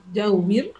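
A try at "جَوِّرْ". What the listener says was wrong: Jaurib, bukan jauwir. Jaurib, ada ba.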